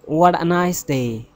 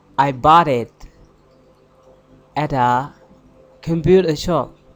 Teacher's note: when the t is at the end of a word and the next word is starting with a vowel word it sounds together